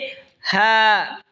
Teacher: হা হলকের শুরু হয়তো উচ্চারণ হবে হা।